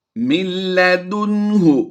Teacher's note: یعنی نون کی آواز کو لام میں مدغم کر دیں گے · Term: ادغام بلا غنہ